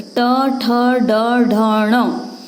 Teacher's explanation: इसके बाद देखेंगे ट वर्ग, तो ट ठ ड ढ ण, इसका उच्चारण करके देखिए, जिस स्थान पर जीभ टच कर रही है उसको कहते हैं मूर्धा, इसलिए इन वर्णों का नाम मूर्धन्य कहा जाता है।